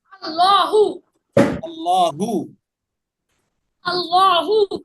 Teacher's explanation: আল্লাহ শব্দের লামের আগে যদি জবর অথবা পেশ থাকে তখন আল্লাহ শব্দের লামটাকে মোটা করে পড়তে হয়।